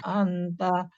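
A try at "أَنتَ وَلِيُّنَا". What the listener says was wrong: Annya kurang Bu, itu ikhfa.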